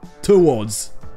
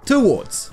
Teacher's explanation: en anglais britannique, ce sera la première syllabe qui sera non accentuée. Là, ici, c'est le TO, donc ici, la syllabe aura le son E.